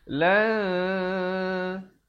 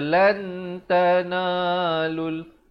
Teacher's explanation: Cara bacanya disembunyikan bunyi nun matinya di belakang ta dengan kadar 2 harakat. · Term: ikhfa